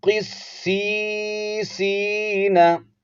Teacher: قصی یعنی دونوں یا کو ایک الف کی مقدار لمبا کرنا ہے آپ نے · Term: یا مدہ